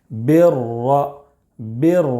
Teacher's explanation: را مشدد پر زبر ہے، اس لیے را کو پر پڑھیں گے.